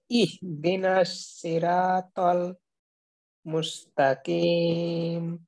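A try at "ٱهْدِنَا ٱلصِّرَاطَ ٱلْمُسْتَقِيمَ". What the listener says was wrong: আচ্ছা, র আলিফ জবর কি রা হবে নাকি র হবে, কোনটা হবে? র। তো আপনার কিন্তু এইখানে রা হয়ে গেছে। সির ইহদিনা, জি, সিরাতাল। আর এই শেষের যে কফটা আছে, কিম, হলোকে শেষ থেকে একটু ধাক্কা না দিলে কিন্তু কাফজের কি এমনটা বোঝার একটা সম্ভাবনা থাকে। তো এই বিষয়টা একটু খেয়াল করুন।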